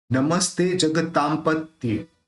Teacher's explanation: उच्चारण अपन म करेंगे क्यों करेंगे क्योंकि यहां पे प है प बोलते समय दोनों होठ मिलने वाले हैं इसलिए अपन इस बिंदी का उच्चारण म के रूप में करेंगे